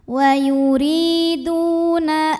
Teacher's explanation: Wa yuriduna ada ikhfa aqrab karena ada nun sukun yang menghadapi huruf ta, maka nun sukun dibunyikan samar-samar, siap-siap menuju huruf ta disertai dengungan. Dengungnya sedikit karena ta ini makhrajnya dekat dengan nun.